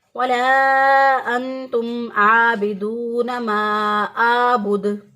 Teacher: और बाज़ लोग इसको पढ़ते हैं वला अंतुम आबिदूना मा आबुद, आइन की बजाय इसको हमजा से बदल देते हैं, तो आबुद की बजाय पढ़ते हैं आबुद, तो भी गलती हो जाएगी।